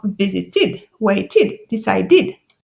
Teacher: id lorsque le verbe se termine par le son t ou de